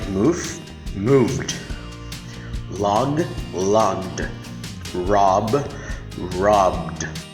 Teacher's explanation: these sounds are voiced. It means our vocal cords vibrate.